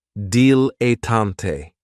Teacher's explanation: Another great noun, which is another one of my favorites, is a dilettante, and this word has 3 syllables. And there's kind of like a stress on that first and last syllable